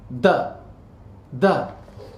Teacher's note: friction so the english duh is different than that of hindi hindi is simply a voiced dental plosive sound